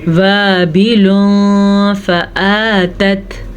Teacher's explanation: वाबिलुन फ़आतत, वाव ज़बर अलिफ, वा अलिफ मद्दा, ये है तनवीन। तनवीन के बाद फ़ा हरूफ़े इख्फा में से है तो तनवीन को हम छुपे हुए गुन्ने के साथ किस तरह पढ़ेंगे